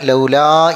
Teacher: പിന്നെ ലൗലാ എന്ന് നീട്ടാനാണ് ലാ എന്നുള്ളത് നീട്ടണം മദ്ദാണ് അപ്പോം അവിടെ മദ്് കൊടുത്തിട്ട് തന്നെ ഓതണം ഒരല്പം പിന്നെ ഒരു നാല്